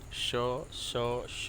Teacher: मतलब शक्कर वाले श को बोलते हैं तालव्य श, जो तालू से टच होके आता है